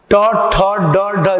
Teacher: ट ठ ड ढ, जीव को पलट के बोला जा रहा है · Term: मूर्धा